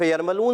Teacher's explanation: یہاں ہم غنہ ادا کریں گے، ناک میں آواز لے کر جائیں گے ، غننے کی معنی ہے ناک میں آواز لے کر جانا،